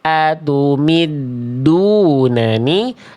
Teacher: enggak ada percikan nafas tidak ada